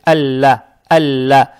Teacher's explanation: Она же удваивается. Здесь фатха приобретает оттенок Я. Лам читается мягко, то есть Алла.